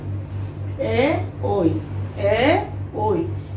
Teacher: এই বর্ণগুলোর উচ্চারণ স্থান হচ্ছে কণ্ঠ এবং তালু, এই জন্য এগুলোকে কণ্ঠ তালব্য বর্ণ বলতে পারি।